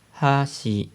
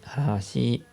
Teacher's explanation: Tenemos palillos, hashi, y tenemos puente, hashi. Hashi, hashi. Se va para abajo, se va para arriba.